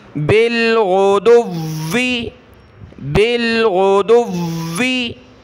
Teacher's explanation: ठीक है, बिल गैन पेश गु, उसके बाद दाल वाव पेश दुव, वाव ज़ेर वी, दुव्वी, बिल गुदुव्वी, गुदुव्वी पढ़ने में आपको लग रहा हो कि दाल को मैं सख्त कर रहा हूँ, दाल को नहीं कर रहा, गैन नॉर्मल, दाल नॉर्मल, दाल को वाव के साथ मिलाकर वाव को सख्त करना है।